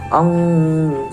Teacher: Nah, di sini terdapat hukum bacaan ikhfa hakiki, yaitu ada nun sukun bertemu dengan huruf jim. Cara membacanya yaitu samar-samar.